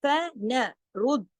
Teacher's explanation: वुजूहन फनरुद्दहा, फनरुद्दहा देखिए फन रुद, रा मोटा और दाल के साथ तशदीद है न दाल के ऊपर, तो रुद दा, दाल को 2 मर्तबा पढ़ना है, बारीकी से पढ़ना है, लेकिन रा मोटा पढ़ा जाएगा रा की हरकत की वजह से